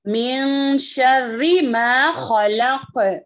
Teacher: خا کو کیا کریں گے؟ موٹا پڑھیں گے اور جو ہے تھوڑی خراش ہوگی گلے میں